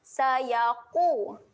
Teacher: tebal huruf qaf. Jangan bunyikan dengan huruf kaf.